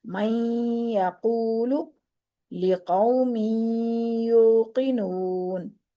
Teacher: زبان کو یا کے نکلنے کی جگہ پر لگا کر ہلکا سا ٹچ کرنا ہے، تو نون کی ادھوری سی آواز کو ناک کی جڑ سے نکالتے ہوئے غنے کی ادائیگی کی جائے گی